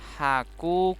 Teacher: ku-nya panjang dua harokat matobi'i